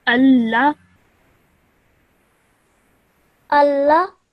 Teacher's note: That's wrong. Because the lam has a shadda and a simple fatha on top of it, you only stretch that sound for 1 second.